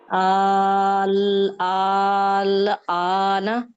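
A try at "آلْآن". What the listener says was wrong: आ को और लंबा करें, 6 हरकत, यानी अपनी फिंगर्स को खोलें, 1 2 3 4 5 6, जब तक 6।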